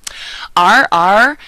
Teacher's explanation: double r in Spanish is um the rolling R sound